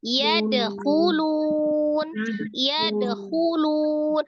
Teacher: Cara mengucapkan huruf kho itu ngoroknya sedikit ya, tidak berlebihan juga, nggak boleh. Jadi kayak antara hak dengan kho ngorok gitu ya.